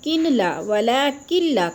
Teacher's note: کاف کو لام کے ساتھ ملا کر مدغم کرنا ہے، یعنی ملانا ہے